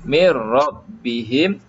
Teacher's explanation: Kita tutup nun ni, kita terus mi masuk kepada ra. Mir rabbihim, hanya satu sahaja hukum idgham bila gunnah.